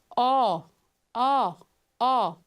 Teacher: ainda é uma vogal de lábios arredondados, ainda é uma vogal mais posterior, mas essa língua já desceu um pouco mais. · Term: Vogal o ó